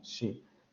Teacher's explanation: Cuando ustedes pronuncian inmediatamente se dan cuenta cómo la parte delantera de la lengua sube hacia esa parte de los postalveolos, se acerca lo suficiente como para generar obstáculos a la salida del aire y entonces se genera la sensación de lo fricativo. · solamente se va a acercar la punta de la lengua hacia los postalveolos. Vamos a producir ese sonido turbulento y no va a haber vibración de cuerdas vocales.